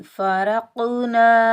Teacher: क़ाफ़ के ऊपर जज़म है, क़ाफ़ साकिन हालत में हरूफ कलकला के 5 वर्ड में से भी आ रहा है तो क़ाफ़ पर हम कलकला करेंगे, डबल साउंड आएगा, टकराव पैदा होगा। रा के ऊपर ज़बर, रा को हम क़ाफ़ साकिन के साथ मिलाएंगे, बगैर खींचे पढ़ेंगे।